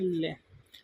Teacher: जैसे ल बोलोगे यानी जीभ के साइड के बगल से पास से होकर हवा निकलेगी। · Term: पाश्विक व्यंजन